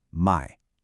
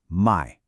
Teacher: The gentle dip of buying, my and that sharp drop for selling my